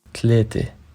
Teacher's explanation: the feminine ending of thalatha, the a sound, is much more closed in Lebanese, more like a.